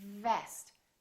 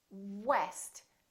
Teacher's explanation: So V is just a lower lip touching the upper teeth. Vest. And W, west.